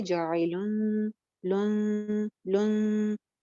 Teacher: اگر یہ تینوں ہی لیٹرز نہیں ہوں یعنی با بھی نہیں ہے حروف حلقی بھی نہیں ہے اور یرملون بھی نہیں ہے تو پھر ہم وہاں پہ اخفا کر کے پڑھتے ہیں یعنی نون کی آواز کو ہائڈ کرتے ہیں. نون کی آواز کو تھوڑا سا چھپا کے پڑھتے ہیں جیسے کہ یہاں پہ جاعلن لن لن موٹا غنہ نہیں کرتے.